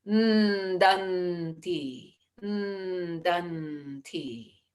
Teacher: we can sort of rest the tongue at the teeth for the danti